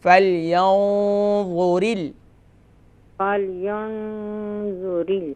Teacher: Heavy اخفا ہوگا، کیونکہ نون ساکن کے بعد حروف مستعلیہ میں سے وا ہے، تو یہاں پر ہیوی اخفا کریں گے، فَلْيَنظُرِ۔